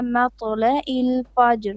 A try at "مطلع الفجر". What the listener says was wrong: No hums. مط قلقلة on the طو. No, don't make hums. Don't push out air. مطلع الفجر.